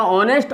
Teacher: यहाँ देखिए, और ये जो है HONEST, इसका प्रोनाउंसिएशन हॉनेस्ट नहीं होता, इसको ऑनेस्ट बोला जाता है, क्योंकि एच साइलेंट है। तो एच साइलेंट होने के कारण इसको बोला जाएगा ऑनेस्ट, और ऑनेस्ट से पहले एन आ गया, तो एन ऑनेस्ट बॉय।